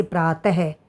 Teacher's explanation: इन्हें कहा जाता है विसर्ग। और संस्कृत में जब यह विसर्ग लगते हैं तो इनके बाद हमारे को ह का उच्चारण होता है। जैसे प्रातः तो आप देखेंगे जहां ये बिंदु लगेंगे हम इसका उच्चारण उसी प्रकार से करेंगे।